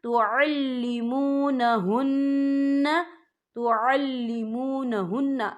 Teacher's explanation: یہاں نون مشدد ہے تو یہاں پر غنہ ہوگا